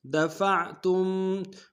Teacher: فا کو عین کے سامنے لانا، عین کو گہرائی سے ادا کریں گے، تا کو میم ساکن کے سامنے لانا، غنہ کریں گے